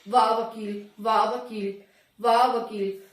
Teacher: तो दांत और होठ दोनों का ही इसमें मिश्रण हो रहा है, दोनों ही आप एक दूसरे से टच हो रहे हैं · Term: दंतोष्ठ व्यंजन